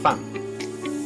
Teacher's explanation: This vowel is similar to English's A as in father, but it's a bit more forward in your mouth.